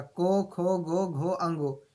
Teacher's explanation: कंठ जो है वो अंगों का, को वर्ग का, को, खो, गो, घो, अंगो, इन सभी का उच्चारण स्थान जो है वो कंठ से है